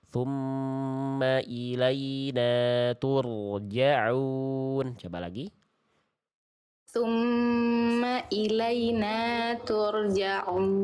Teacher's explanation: getaran ro memang dia tidak boleh berlebihan. Tapi nggak boleh juga getarannya hilang. Tetap tegas. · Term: Ro sukun